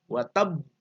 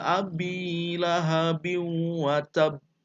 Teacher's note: Untuk be-nya, untuk pantulannya itu harus dijeda. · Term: qalqalah akbar